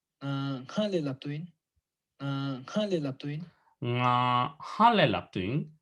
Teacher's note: The third pattern has frication, but nasality it has the frication in the beginning, but the nasality appears on the vowel